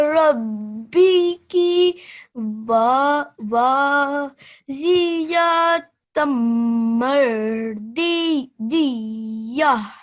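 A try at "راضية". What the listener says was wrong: I like how you said this D, and well done for remembering the ir. But this D, you forgot to say, you said Z, yeah? So radiya. So do it from here. Ra.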